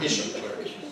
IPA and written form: ˈɪʃuː klɝːk (issue clerk)